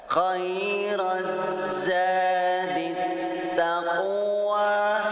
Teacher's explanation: Khairaz za hukum bacaan matabi'i karena ada huruf alif yang diawali baris fathah, panjangnya 2 harokat